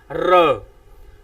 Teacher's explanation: ਰਾਰੇ ਨੂੰ ਜਿਹੜਾ ਕੰਬਵਾਂ ਅੱਖਰ ਵੀ ਕਿਹਾ ਜਾਂਦਾ ਹੈ। ਰਾਰਾ ਜਿਹੜਾ ਇਹ 3 ਤੋਂ 4 ਵਾਰ ਜੀਭ ਜਿਹੜੀ ਆ ਪੂਰਨ ਤੌਰ ਤੇ ਕੰਬਦੀ ਹੈ, ਤਾਂ ਹਵਾ ਜਿਹੜੀ ਆ ਮੂੰਹ ਥਾਣੀ ਬਾਹਰ ਨਿਕਲਦੀ ਤਾਂ ਉਜਾਗਰ ਹੁੰਦਾ ਹੈ ਰ।